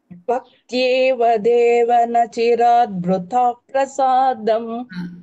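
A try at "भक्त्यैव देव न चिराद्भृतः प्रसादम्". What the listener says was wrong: பக்தியேவ சொல்றேன் இல்லையா, பக்தி யைவ யை தட் ஒன், அது சொல்லுங்க திருப்பி.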